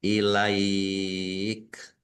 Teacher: fathah bertemu ya, kalau waqaf maka dibacanya namanya mat layin. Mat layin itu melemah atau melunak. Ilaik. Jim tanda waqaf boleh berhenti juga boleh terus.